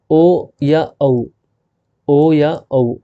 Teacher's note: ओष्ठ क्यों है, क्योंकि होठ गोल हो रहे हैं ओ बोलते समय, और औ बोलते समय, और आवाज़ कहाँ से आ रही है, कंठ से, इसके लिए कंठोष्ठ है।